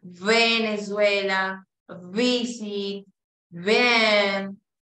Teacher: los dientes de arriba están chocando con el labio inferior y están vibrando A diferencia de la que la f solo vota aire no